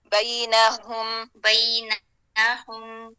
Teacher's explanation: نون پہ جھٹکا نہیں دینا